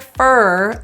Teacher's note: native English speakers generally reduce that o into a quick transition from F to R it sounds like fur as in animal